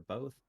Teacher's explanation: They both say both with an L for both, despite one being from Utah and one being from Oregon